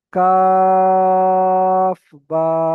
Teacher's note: কাফ তিন আলিফ টান হবে, বা এক আলিফ টান হবে।